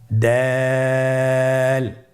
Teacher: ছবিতে দেখা যাচ্ছে জিহ্বার আগা সামনের উপরের দুই দাঁতের গোড়ার সঙ্গে লাগিয়ে উচ্চারিত হয়